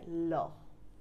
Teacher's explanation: পার্শ্বিক ব্যঞ্জন, পাশ দিয়ে হাওয়া বের হয়ে যায়